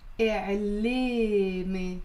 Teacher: But in the Lebanese dialect, we pronounce it as إعلامي. So notice how both the alif and the ya are pronounced as a